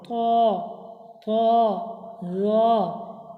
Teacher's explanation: ত র উচ্চারণ সময় মুখ একটু গোল করে আওয়াজ মোটা করে উচ্চারিত হয় ত ত র।